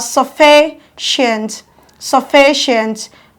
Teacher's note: Counting from the back, 1, 2. Your stress falls on fee, stressing the syllable louder than the other syllable.